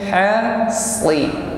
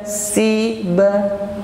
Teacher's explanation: huruf shad adalah huruf itbaq, bunyinya tebal, karena isti'la lidah bagian belakang ini terangkat ketika huruf shad ini diucapkan. Mau fathah mau kasrah, maka shad ini tetap tebal.